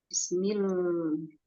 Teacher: Jadi pada saat pengucapan millahi itu dia harus diposisikan sebagai sukun dulu baru dia berharokat ya. Nah, huruf lam di sini karena masuk kepada huruf bainiyah maka dia tidak boleh dibaca lebih panjang daripada bis